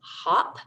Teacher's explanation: the short o as in hop makes the ah sound